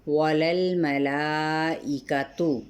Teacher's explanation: للہ اس میں جلالہ کا لام باریک الف مدہ کے قائم مقام کے ساتھ، یعنی ایک الف کے برابر کھینچتے ہوئے۔ وللملائکۃ، لام کی زبر کو لام سے ملائیں گے، لام کو ہلائیں گے نہیں۔